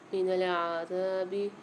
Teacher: زال کے ساتھ الف آ رہا ہے، زال کو ایک الف مقدار کھینچ کے پڑھیں گے